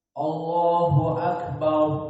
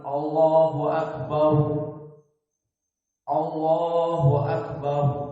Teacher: maka bar mufakhamah, karena ra di sini disukunkan sengaja dan sebelumnya fathah. Allahu Akbar, maka ra-nya mufakhamah.